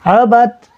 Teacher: دال نہیں پڑھ رہے بلکہ با کو ڈائریکٹ تا سے ملاتے ہوئے پڑھ رہے ہیں